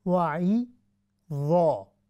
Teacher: تو آپ نے عین کو باریک پڑھنا ہے، وعی ضا، پھر جا کر ضا کو موٹا پڑھنا ہے